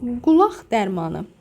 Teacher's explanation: Burada ikinci Q, X kimi tələffüz olunur.